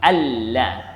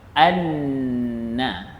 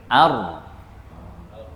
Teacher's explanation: hujung lidah kita tu dinaikkan ke langit-langit atas bahagian depan